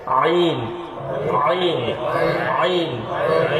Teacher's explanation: কণ্ঠনালীর মধ্যখান থেকে উচ্চারণ হবে হলকের মধ্যখান থেকে